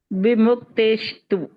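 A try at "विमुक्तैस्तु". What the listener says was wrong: Where is the sha? And why are you saying, and why are you saying tu?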